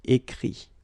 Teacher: Remember that phonetically this final T doesn't exist. Okay? So the sound will be only this I, écrit.